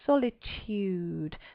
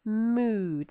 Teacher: So you can just hear that y creeping in, solitude, but not in mood. That is just ood.